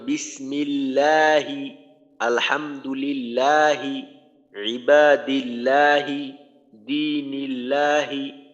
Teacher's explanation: তখন আল্লাহ শব্দের লাম পাতলা করে পড়তে হবে